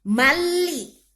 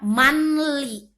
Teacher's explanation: Suara nun atau suara tanwin masuk ke lam. Karena dia hukum bacaannya idgham bila gunah.